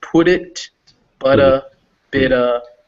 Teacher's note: all those words are going to be those tapped d sounds